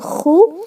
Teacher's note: When do you pronounce it like khu? When you include the breath in your sound.